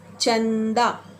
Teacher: चंदा, न फिर नाक से बाहर आती है और द फिर मुंह से बाहर। तो जिनका उच्चारण नाक और मुंह दोनों से होता है उसे कहते हैं अनुनासिक शब्द।